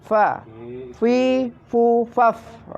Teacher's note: Selanjutnya adalah makharijul huruf fa, yaitu bagian tengah dari bibir bawah dengan ujung dua buah gigi yang atas adalah tempat keluarnya fa